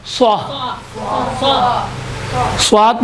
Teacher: اما صاد میں موٹا تلفظ ہونے کی وجہ سے بیچ میں فاصلہ رہتا ہے